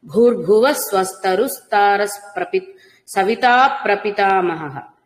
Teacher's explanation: భూర్భువ రెండు భకారాలు మహాప్రాణాలు పలకాలండి